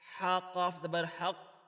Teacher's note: قاف کے اوپر شد ہے، یہ مشدد حروف ہے، تو اس کو سختی سے پڑھیں گے